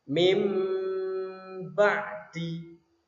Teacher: nun sukunnya berganti atau berubah dengan bunyi mim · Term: iqlab